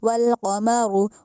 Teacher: वल्क़ में जो क़ाफ है वो उसको मोटा करके पढ़ना है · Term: नुक्तों वाली क़ाफ